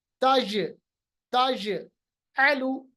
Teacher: जीम को हम कलकला करेंगे, आवाज को वापस लाएंगे।